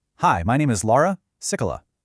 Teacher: let your pitch fall on your last name, like you're putting a period at the end of the sentence.